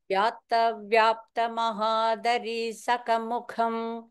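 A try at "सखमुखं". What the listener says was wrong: சகமுகம் ரெண்டுமே வந்து first மகாபிராணம் first time நீங்க சுகமுகம் சொன்னீங்க சகமுகம்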